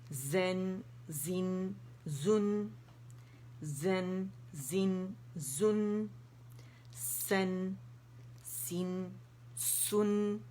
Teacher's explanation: हमारी ज़बान निचले दांतों को नहीं लगेगी, टच नहीं करेगी। ठीक है, और ना ही दांत आपस में जुड़ेंगे, ताकि सफ़ीर जो सीटी है वो वाज़ेह हो।